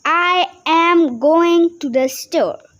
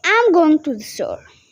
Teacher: For example, instead of saying every word with the same impatience, like I am going to the store, we say I'm going to the store. The main information store gets this stress.